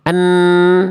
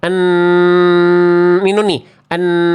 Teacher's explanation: nun makhrajnya di ujung lidah ke langit-langit depan. En, tapi sebagiannya masuk ke hidung. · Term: dengung